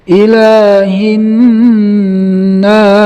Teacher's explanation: Kemudian di sini ada nun yang bertasdid, hukumnya gunnah, didengungkan 2 sampai 3 harokat. Ilahin nas.